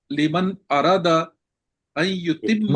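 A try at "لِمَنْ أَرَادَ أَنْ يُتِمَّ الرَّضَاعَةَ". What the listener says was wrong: نہیں، الف ہے نا، الف سے پڑھیں من ارادہ، نہیں ارادہ، الف ہے درمیان میں۔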